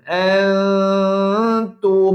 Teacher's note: Maka dengung samar dua harakat. Sama tuan puan. Ikhfa.